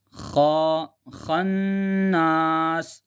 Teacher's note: جو خناس ہے خا کو موٹا پڑھیں گے کیونکہ خا فتحہ